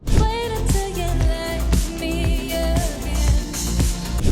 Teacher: cuando tenemos una T en medio de dos vocales, este sonido de T se convierte en una flap T. Así que este ejemplo, en vez de sonar como wait until, cuando lo pronuncias rápido suena como wait until.